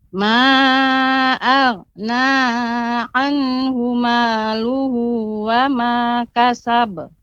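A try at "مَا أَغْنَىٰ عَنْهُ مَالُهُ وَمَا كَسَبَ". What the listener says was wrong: Ya, pengucapan na tadi Ibu agak terlalu panjang. Ma'aghna. Nah, itu terlalu panjang. Cukup dia 2 harokat saja dengan ditekan. Ma'aghna anhu maluhu wa ma kasab.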